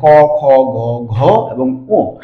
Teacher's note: এই পাঁচটা বর্ণ উচ্চারণ হয় হচ্ছে জিহ্বা মূল থেকে, যার একটা নাম হচ্ছে কণ্ঠ, অর্থাৎ আমাদের যে কণ্ঠ আছে এই কণ্ঠের ঠিক কাছাকাছি জিহ্বার হচ্ছে একদম মূল গোড়া, সেখান থেকে হচ্ছে এই পাঁচটা বর্ণ উচ্চারিত হয়। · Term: ক বর্গীয়